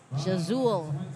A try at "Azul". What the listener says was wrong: Azul. That's Azul. Yeah. Silent J.